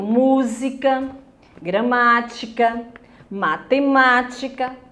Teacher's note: as proparoxítonas a sílaba tônica é a antepenúltima e todas as proparoxítonas são acentuadas bem mais fácil na antepenúltima